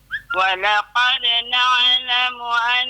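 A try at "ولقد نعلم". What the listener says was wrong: Na'lamu. Na'lamu dia seret. Nah, kalau bahasa dia saya senang sebut, dia seret huruf ain tersebut.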